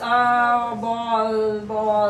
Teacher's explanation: So voice goes on. In the word ball, the voice doesn't stop at all. The voice is continuous.